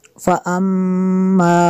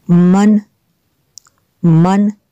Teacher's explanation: जितना हुरूफ़ मद्दा की जितनी मिकदार है उतनी ही गुन्ना की मिकदार होगी, उतनी देर नाक में आवाज़ रहेगी